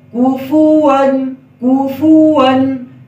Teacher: کاف کے اوپر پیش ہے، کاف میں ہونٹ گول ہوں گے